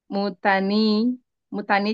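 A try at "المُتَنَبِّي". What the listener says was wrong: Bukan, bukan mutani. Setelah nun ada ba kasrah. banyak, banyak tasydid. Nabi gitu.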